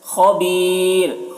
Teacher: خا کو پر پڑھیں گے کیونکہ خا حروف مستعلیہ میں سے ہے · یہاں پر را کو باریک پڑھیں گے کیونکہ وقف کی وجہ سے را کی جو دو پیش کی تنوین ہے وہ سکون سے بدل جا رہی ہے، تو جب رائے ساکنہ سے پہلے یا ساکن ہو، را ساکن سے پہلے یا ساکن ہو تو اس را کو باریک پڑھتے ہیں، تو یہاں پر دیکھیے یا ساکن ہے، پھر یہ را کے اوپر جو پیش ہے وہ بھی سکون سے بدل جا رہا ہے، تو اس وجہ سے را کو باریک پڑھیں گے۔